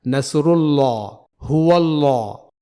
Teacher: تو جیسا کہ آپ نے غور کیا ہوگا کہ میں نے یہاں دونوں جگہ حرف لام کو پر یعنی موٹا پڑھا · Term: موٹا لام